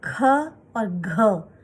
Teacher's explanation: तो क, ग और अंगा, ये जल्दी बोला हमने, पहला, तीसरा और पांचवा, ये हो गए अल्प प्राण। और ख और घ, इन्हें बोलने में थोड़ा ज्यादा हवा निकलती है मुंह से, जो होते हैं महाप्राण।